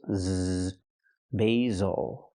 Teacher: Use the long A sound for the first syllable, like say and day, bay, basil. The S makes the Z sound, like zebra. Make a vibration. Use your voice.